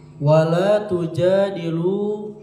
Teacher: Jadi bacanya agak panjang sedikit yaitu dua harakat dua harakat atau satu al satu alif. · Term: mad thbi'i